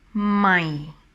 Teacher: this tone is dropping down when you pronounce it, my. So I always say that it sounds like a disappointing tone. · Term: low tone